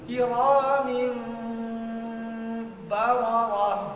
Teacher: ইকফার হরফের নুন সাকিন যেমন নুনের জায়গা থেকে উচ্চারণ হয় না, কোন পরের হরফের মাখরাজের কাছে চলে যায়, এখানেও মিমকে স্পষ্ট করা যাবে না। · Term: ইখফা